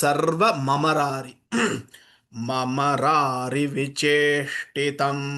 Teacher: again there is a sandhi here sarvam amarari vicheshtitam becomes sarva mamarari